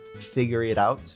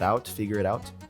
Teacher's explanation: there's a tap T that becomes like a D sound